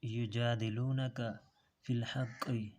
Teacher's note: اس قاف کو پر پڑھنا ہے، ہا نکالنا ہے، ہا حلق سے نکالنا ہے، قاف کو پر پڑھنا ہے